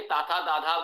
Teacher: जिवा दांतों को स्पर्श कर रही है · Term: त वर्ग